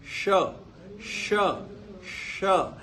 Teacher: श को बोलते हैं ना उस समय आपका दांत वात के साथ उतना संबंध नहीं रहता जितना कि तालू के साथ में आपके श्वास का संबंध बनता है तो तालू और शवास उसके बाद में बोले जाने वाला जो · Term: तालव्य